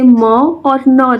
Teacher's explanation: मतलब यहाँ पे कहा जा रहा है कि जब हवा नाक मतलब नासिका जो है वो नाक को कहा जा रहा है से निकलती है तो नासिकीय ध्वनियाँ जैसे म और न, जैसे हम म का उच्चारण करते हैं या न का उच्चारण करते हैं तो जो हमारी आवाज़ होती है वो नाक से होके निकलता है। जैसे कि आप सभी उच्चारण मतलब करके देख सकते हैं कि जैसे हम म बोल रहे हैं या न बोल रहे हैं तो जो हमारा नाक है उसमें आवाज़ जाता है।